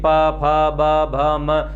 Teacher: जब हम इन वर्णों का उच्चारण करते हैं तो आप कहीं न कहीं देखते हैं कि प, फ, ब, भ, म, तो दोनों होठ एक दूसरे को स्पर्श करते हुए खुलते हैं, तो इन वर्णों का उच्चारण होता है। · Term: ओष्ठ्य वर्ण